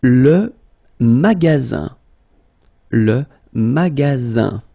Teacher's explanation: Le magasin, le magasin, okay, remember you've got only one S between two vowels, then you get the sound Z, alright, and then the ending here is IN, so it's nasal, goes in your nose